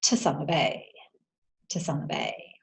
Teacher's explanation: we don't actually say 'TO' It's actually 't''